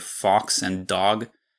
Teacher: I probably pronounced them something closer to /fɔks/ and /dɔg/